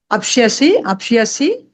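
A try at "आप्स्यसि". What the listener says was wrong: షా లేదమ్మా, షా పలుకుతున్నారు మీరు, అదే అంటున్నారు. ఆప్స్యసి, ఆప్ సా యా సి, ఆప్స్యసి. ఎక్కడ షా లేదు, షా కాదు, షాలా పలక, మూడు కదా అక్షరాలు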